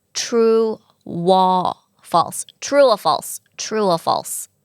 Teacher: สระอูอีกแล้วมีเสียงวแหวนพ่วงมาในสระนะคะ